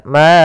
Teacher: Kemudian a'bud, ada bacaan mad jaiz munfasil, yaitu suara ma-nya dipanjangkan sepanjang 4 harokat